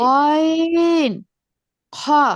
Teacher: 3 number মাখরাজ হচ্ছে কণ্ঠনালীর শেষের ভাগ হতে উচ্চারিত হয়। জি, গয়ন, খ।